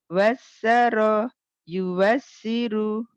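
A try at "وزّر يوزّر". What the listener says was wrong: wazzaro jangan wasaro z wazzaro yuwazziru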